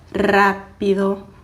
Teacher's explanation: a gente vai fazer um som forte que nada mais é que vibrar por mais tempo a língua